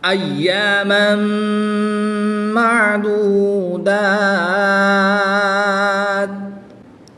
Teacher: تنوین کے بعد حروف ینملون میں سے میم آ گیا تو یہاں پر ادغام مع الغنہ ہوگا، غنہ کر کے پڑھیں گے